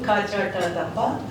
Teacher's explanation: So if you look at our script, for example, ka, cha, ta, ta, pa, the tongue is touching at the back, then it moves forward